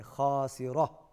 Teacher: یہاں پر ہم وقف شکل میں ہا پڑھیں گے، خاسرہ، اور جب ملائیں گے تو پھر ہم تا پڑھیں گے۔